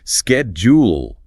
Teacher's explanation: Americans hit it with a hard K sound. Schedule. Brits use a soft sh sound.